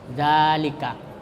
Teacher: dibaca panjang biasa, 2 harakat, ya. 2 harakat itu 1 alif. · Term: mad tabi'i